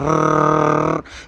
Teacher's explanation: रा का उच्चारण करते समय जीभ की नोक मसूड़े के नज़दीक आकर कांपती है। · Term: प्रकंपी व्यंजन